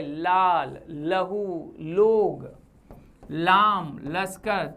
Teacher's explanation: ल पार्श्विक, जिसके उच्चारण में हवा जीभ के पास या बगल से निकलती है